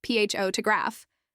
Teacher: in photograph the first syllable is stressed